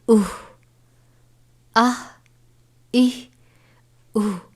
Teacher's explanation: ہا موٹے والا ہے، سینے میں سے خارج ہوتا ہے. آواز یہ ہا ادا کرتے وقت آواز تھوڑی بھاری نکلتی ہے